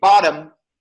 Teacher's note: We have flap T here. In American, we have flap T. If you say bottom, that T is flap. We call it flap T.